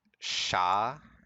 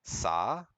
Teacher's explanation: if something is like sha written as Sha it can come out as sa